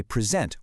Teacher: present with the stress on the first part, that's a gift, right?